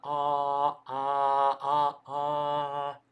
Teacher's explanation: В санскрите при произношении придется открывать рот. То есть санскритские гласные, они более открытые, чем гласные русские. То есть вам придется открывать таки рот. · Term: санскритская а